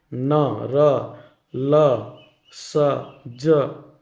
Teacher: जीभ छू रहा है ना मसूड़ा ऊपरे वाला भाग को, तो ये हो जाएगा वत्सर्य व्यंजन।